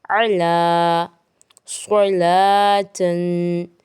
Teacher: لام موٹا نہیں کریں گے